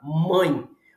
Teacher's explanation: Experimenta falar a palavra mãe você percebe que aqui nessa região das fossas nasais você sente que há uma trepidação interna na boca nessa região por isso que